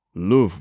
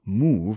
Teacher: Gill even distinguishes between love with a short vowel and move with a long one